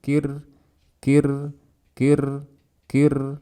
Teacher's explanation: Kemudian dzukirtum, ada kaf bertasydid. Kemudian ada ro mati sebelumnya kasroh. Ro-nya dibaca tipis.